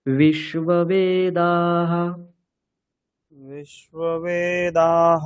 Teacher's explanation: বে নিচে বলছেন, বে উপরে বলতে হবে।